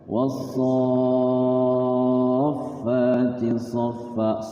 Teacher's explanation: Panjang dulu so-nya 6 harokat baru tasydidkan ke huruf fa. · soknya itu panjang 6 harokat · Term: Mad jaiz musaqqal kalimi, mad jaiz musaqqal kalimi